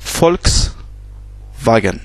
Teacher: Donc, le V se prononce F en allemand.